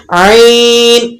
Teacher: عین یہ وسط حلق سے ادا ہوتا ہے، یعنی حلق کے درمیان سے آپ نے اس کو ادا کرنا ہوتا ہے، اور اس کی آواز جو ہے وہ رگڑ کھاتی ہوئی نکلتی ہے حلق میں سے